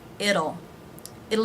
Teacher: the t is pronounced here as a flap t the d sound